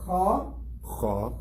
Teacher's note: Kha is coming from the top of the throat